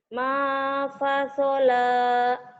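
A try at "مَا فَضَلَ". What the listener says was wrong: Masola kan ada titiknya.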